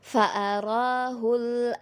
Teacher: Jadi lam itu diseret saja sedikit ya, jangan terlalu cepat perpindahannya agar lamnya tidak mantul. Jadi fa'arahul hul a ya, jadi dia diseret, jangan di hul a gitu. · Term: Lam sukun